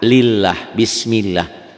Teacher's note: Nah, yang atas bismillah, lafaz Allahnya dibaca tipis, berbunyi a